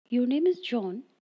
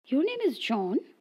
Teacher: beginning with a medium pitch and ending with a lower tone that is falling intonation is a simple assertion